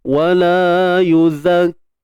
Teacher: Him, mim mati bertemu waw, izhar syafawi, jelaskan sebutan mim.